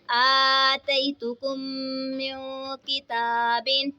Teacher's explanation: اور یہاں پہ دیکھیں نون ساکن ہے، نون ساکن کے بعد حروف اخفا کا کاف آ رہا ہے تو اخفا ہوگا، یعنی غنہ کر کے پڑھیں گے · اب یہاں پہ دیکھیں میم ساکن کے بعد دوسری میم آ رہی ہے تو یہاں پہ ادغام شفوی کا قاعدہ ہوگا، یعنی ہم نے یہاں پہ غنہ کر کے پڑھنا ہے